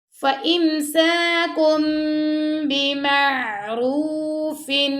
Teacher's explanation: اب کاف دو پیش کن کے بعد آ گیا با، تو یہاں پہ ہو رہا اقلاب، یعنی کہ ہم نے کاف دو پیش کن کی جو نون کی آواز اس کو می میں بدل دیں گے